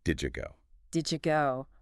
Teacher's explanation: Like the sound at the end of did and the Y sound at the beginning of you. Did you? They often blend together to make a J sound, so did you go becomes did you go.